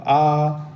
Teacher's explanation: तो जब हम बड़ा आ बोलते हैं ना, तो मुख हमारा पूरा खुल जाता है। जैसे रसगुल्ला खाने के लिए मुँह आते हैं ना, तो आ, तो ये विव्रत हो गया।